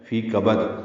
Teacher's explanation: کبد کاف باریک ہے، با کو دال سے ملا دیں گے، دال ساکن پہ قلقلہ ہوگا وقفاً